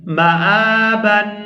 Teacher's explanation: تنوین کے اوپر اخفا کریں گے اور آواز نا کے اندر جائے گی